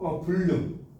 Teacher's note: 이 리을 때문에 니은이 리을로 바뀌었잖아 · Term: 유음화